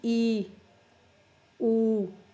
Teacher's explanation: ਜੀਭ ਆਪਣੀ ਉੱਚੀ ਉੱਠਦੀ ਹੈ, ਜੀਭ ਉੱਠ ਕੇ ਤਾਲੂ ਦੇ ਨੇੜੇ ਪਹੁੰਚ ਜਾਂਦੀ ਹੈ, ਬਿਲਕੁਲ ਨੇੜੇ, ਉਹਨੂੰ ਕਹਿੰਦੇ ਉੱਚੇ ਸਵਰ।